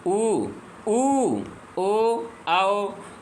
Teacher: ये देखिए आप बोल के देखिए कहाँ से आवाज़ आती है, पीछे से आ रही है, तो इन्हें हम क्या कहते हैं, पश्च स्वर कहते हैं।